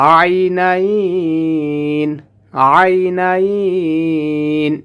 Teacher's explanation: আইনাইন আইনাইন, এখানে 3 আলিফ টেনে পড়তে হবে।